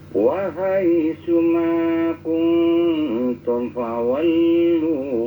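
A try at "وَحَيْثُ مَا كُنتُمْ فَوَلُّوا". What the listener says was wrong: Ya itu, ma kuntum fawallu. Ma kuntum fawallu, jangan melipat jedah ya. Ada tum itu jedahnya. Ma kuntum disempurnakan dulu mim matinya. Jangan ma kuntum fawallu gitu.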